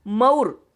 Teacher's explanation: क का लोप हुआ पर जो उ ध्वनि है वह अपने स्थान पर विद्यमान है और मुंह में जो उ है वह लुप्त हो गया और शब्द बन गया मऊर। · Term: विषमीकरण